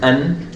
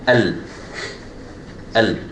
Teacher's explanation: So I'm jumping straight from the hamza to the lam, as if the noon does not exist. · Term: idgham without a ghunnah